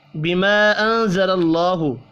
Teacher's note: الف کے اوپر چھوٹی مد ہے، 3 الف کے برابر اس کو کھینچ کر پڑھیں گے